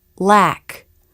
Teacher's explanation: the tongue comes through the teeth to make the light l